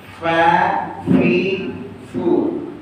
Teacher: Fa itu adalah ujung gigi dengan bibir Gak ada hubungannya dengan lidah jadi gigi atas itu dengan bibir bawah